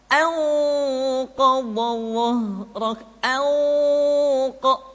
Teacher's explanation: maka harus terdengar suara gunnah yang menebal atau disebut dengan tafkhimul gunnah